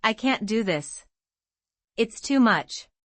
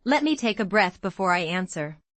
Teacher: The panic phrase rises in pitch and ends with a strong stress on much. The calm phrase has a falling tone on breath, showing control.